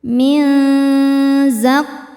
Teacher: Selanjutnya ada ikhfa hakiki ausat karena nun sukun bertemu zai. Cara bacanya nun disamarkan ke zai disertai dengung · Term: ikhfa hakiki awsat